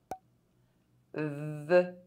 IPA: v